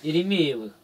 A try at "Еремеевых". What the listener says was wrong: Ну, ударение это Еремеевых, 2 Е. А ты Еремеевых считаешь дальше.